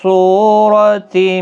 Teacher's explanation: صاد حروف مستعلیہ ہے، پر پڑھا جائے گا، سو واو مدہ بھی ہے، را زبر کی وجہ سے پر پڑھا جائے گا۔